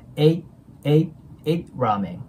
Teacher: T▁破裂音になるんで、次に母音が来てないと音が消えます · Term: T▁なくなってる